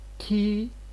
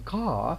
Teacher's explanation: while producing k, our tongue is already at the back part of the mouth, because here it is followed by a back vowel. A is a back vowel, as opposed to here E is a front vowel.